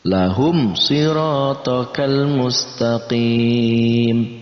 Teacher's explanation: Ketika ada mim mati bertemu dengan huruf hijaiyah, apapun huruf hijaiyahnya selain huruf mim dan ba, maka itu masuk dalam kategori izhar syafawi. Maka dibacanya jelas, antara mim mati dibaca jelas, huruf setelahnya pun dibaca jelas. Di sini hurufnya shad, maka shadnya juga dibaca jelas.